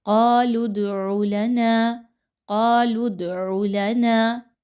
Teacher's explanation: دال کو ہلا کر پڑھیں گے تھوڑا سا۔ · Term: حروف قلقلہ